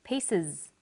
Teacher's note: The S on the end is pronounced z because it followed an S sound.